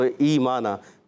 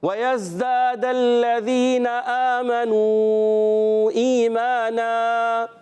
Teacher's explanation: تو زبر کی تنوین کو الف سے بدلنا ہے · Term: وقف بالابدال مع الالف